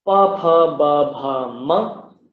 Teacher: when the contact happens in the lips, that is known as oshtaha